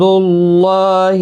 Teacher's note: اللہ کا لام پیش کی وجہ سے پر پڑھا جائے گا، کھڑی زبر بھی ہے۔